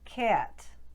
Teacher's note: throw a little bit of an off glide onto it putting movement into the vowel sound this means that cat would become cat hat would